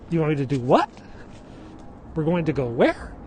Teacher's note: he will raise his voice a little bit on the last syllable. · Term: Uptalk